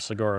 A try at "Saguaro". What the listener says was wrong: All right, well, it's pronounced Saguaro. So the G is like a W.